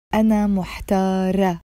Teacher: In the feminine, you would say أنا محتارة with the A sound in the end. This is the T مربوطة, the T, the feminine T, which we don't pronounce.